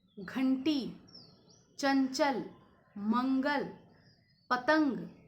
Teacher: घंटी, चंचल, मंगल, पतंग, इनमें आप देखना कि आपके गले से ज़्यादा आपके नेज़ल साउंड ज़्यादा आ रहा है, हवा नाक से होकर बाहर निकलती है, तो ये अनुस्वार है।